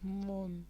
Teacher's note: দুইভাবে উচ্চারণ হয়, বিবৃত বা স্বাভাবিক আমল আর সংবৃত বা ও এর মতো মন। মর সাথে অ আছে, অটা ওকারের মতন উচ্চারণ হচ্ছে, এজন্য এটি সংবৃত বা ও ধ্বনির মতো।